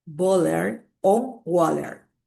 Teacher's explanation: replacing the T in the bottle or water with a glottal stop